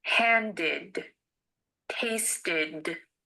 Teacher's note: The ed in handed and tasted ended with an id sound.